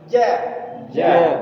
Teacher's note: dari tengah lidah keluar tiga huruf jim syin ya